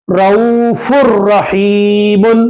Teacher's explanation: ادغام بلا غنہ نون کی آواز کو ڈائریکٹ لام را میں ملائیں